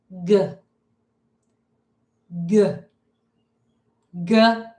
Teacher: It is not continuous. G G is a stop sound. We make it with a burst of air. So there under the word great, you should have a letter V for voiced and an S for stopped.